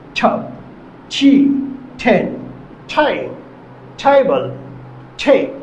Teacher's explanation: ঠ সাউন্ডে উচ্চারিত হয় জিহ্বার ডোগা উপরে দাঁতের গোড়ার সাথে হালকা স্পর্শ করে বলতে হবে ঠ,